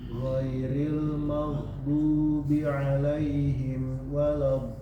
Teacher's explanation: Lebih panjang sedikit lagi mad lazimnya.